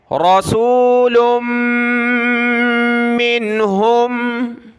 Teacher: लाम को मीम के साथ मिलाएंगे, नाक में आवाज़ पैदा होगी, फिर मीम को नून के साथ।